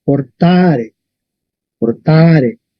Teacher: Y la fuerza está en la A, portare, portare.